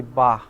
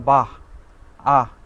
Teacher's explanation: বিসর্গ হলো অঘোষ হয়ের উচ্চারণে প্রাপ্ত ধ্বনি